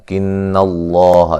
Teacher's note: لفظ اللہ کو موٹا ادا کریں گے، اس سے پہلے حرف پر زبر ہے